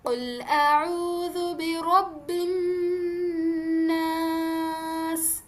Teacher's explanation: تو یعنی کہ ہمیں جو ناس لفظ ہے یہاں پہ جو نون تشدید ہے اسے ہم نے 2 کاؤنٹس تک ناک میں گھمانا ہے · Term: غنہ